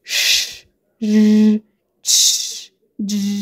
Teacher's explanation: وهي الكونسونانتس اللي بتصدر من آخر الالفيولار ريدج. قلنا الجزء اللي باللون الأزرق ده مسمينه alveolar ريدج. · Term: post alveolar consonants